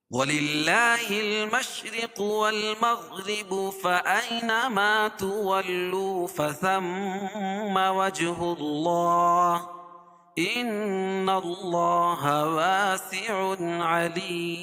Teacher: علیم، اور یہاں مد عارض وقفی ہوگا. وَلِلَّهِ الْمَشْرِقُ وَالْمَغْرِبُ فَأَيْنَمَا تُوَلُّوا فَثَمَّ وَجْهُ اللَّهِ إِنَّ اللَّهَ وَاسِعٌ عَلِيمٌ.